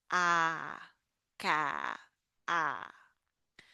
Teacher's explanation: Your mouth is wide open, tongue at the bottom, ah, ka, ah.